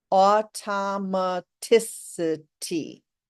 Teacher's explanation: it's a six syllable word and we emphasize the fourth syllable automaticity okay six syllables with the emphasis on the fourth and · It's a 6-syllable word, and we emphasize the 4th syllable